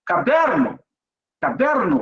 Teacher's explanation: O que você pronunciou mais forte? A penúltima sílaba. Então, ela é uma paroxítona.